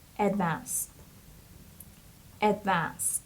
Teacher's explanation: The stress is on the second syllable, so it's advanced. And the ed here, we pronounce it like t.